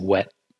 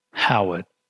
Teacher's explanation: there's a very slight touch of the back of the tongue touching the velum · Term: approximate vlar consonant